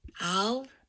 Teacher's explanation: starts out here at 170 hertz or thereabouts and at the end it is up at 270 hertz that's about a rise of about 100 hertz which is nice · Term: rising